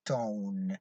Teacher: you can notice that the air flows through your nasal cavity · Okay, a vowel can also be produced with certain degree of nasality or nasalization, that is by lowering the volume permitting the air to go out through the nasal cavity. Okay, a nasalized vowel is realized whenever it occurs before a nasal consonant